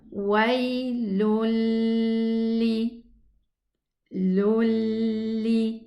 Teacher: the lam shadda tends to grab a ghunna. It wants a ghunna.